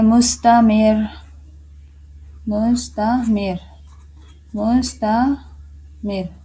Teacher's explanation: زیر، تو مستمر، مستمر، اس را کو موٹا نہیں کریں گے، را تشدید ہے اور اس سے پہلے زیر ہے تو اس کو بھی را باریک ہوگی